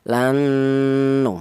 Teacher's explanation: Jadi cara bacanya ini diidgamkan lan panjangnya ini ya dua ketukan lan ya seperti itu. Ini ada nun bertahdid ya ada gunahnya dengung dua harakat ya.